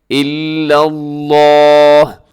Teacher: لا تعبدون الا اللہ، لفظ اللہ کو آپ موٹا پڑھیے گا، لفظ اللہ سے پہلے لام کے اوپر زبر ہے، آپ اسے موٹا کیجیے گا۔